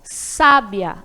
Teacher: sábia, a sílaba tônica é a primeira sílaba, sa